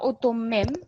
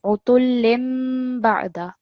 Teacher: Just the kasratain stroke becomes a meme sound.